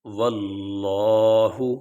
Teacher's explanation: یہاں لفظ اللہ سے پہلے واو کے اوپر زبر ہے، اس لیے لفظ اللہ کو موٹا پڑھیں گے